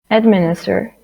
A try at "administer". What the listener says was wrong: The stress on M, this syllable. Administer, administer. If you say administer, you're placing the stress on this part, first syllable. That is not, right? Administer, right? Administer. It's like it's like the stress is like this.